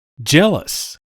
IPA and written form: ˈdʒeləs (jealous)